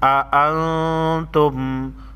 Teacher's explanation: نون ساکن پر اخفائی حقیقی ہوگا کیونکہ اس کے بعد حروف خلقی لام را میں سے کوئی حرف نہیں.